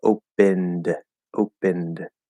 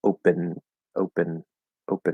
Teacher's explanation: it's going to sound like an n because the n and the d are in the same place